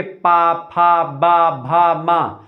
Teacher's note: पा बोलेंगे तो दोनों ओठ जो होंगे आपके नीचे ऊपर के आपस में टकराएंगे, ठीक है। तो ये एक प्रकार से ओष्ठ व्यंजन होते हैं, मतलब ओष्ठ व्यंजन है, ठीक है।